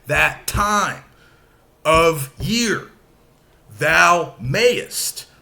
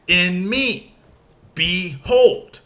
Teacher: we start with an unstressed syllable and then we have a stressed syllable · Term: iamb